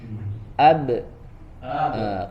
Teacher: karena dia memantul, punya sifat qalqalah, maka dia setelah rapat langsung dipantulkan, ya dilepaskan makhrajnya